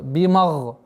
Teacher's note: Гайн твердая. Но нужно обратить внимание, чтобы мим не произносилось твердо.